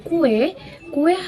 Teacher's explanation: kue kue hanya terdiri dari kata kuu dan e kue tapi pada saat kita ucapkan seperti ada ee tambahan huruf w di antara huruf u dan e